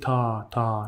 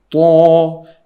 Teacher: طا heavy. Don't say ta. No, say طا. It should fill your mouth.